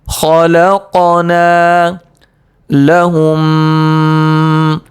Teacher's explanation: قاف حروف قلقلہ میں سے ہیں اور اس پر آ رہا جزم، لہذا قاف میں قلقلہ ہوگا، یعنی اس کی آواز سختی کے ساتھ واپس لوٹے گی